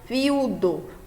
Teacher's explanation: Quando eu pronuncio a palavra viudo, a vogal mais forte fica no U, né? Apesar dela ser fraca, mas mesmo assim ela permanece aqui, o U mais forte um pouquinho do que o I, tá certo?